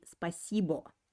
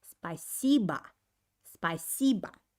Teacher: the accent is put on the second syllable while the last o actually isn't pronounced clearly